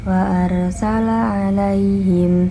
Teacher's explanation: Wa arsala alaihim, sesudahlah bertemu dengan ya mati yaitu mat tabi'iyah yang dibaca 2 harakat